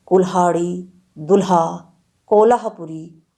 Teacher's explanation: हिंदी में ल का महाप्राण व्यंजन लह विकसित हुआ है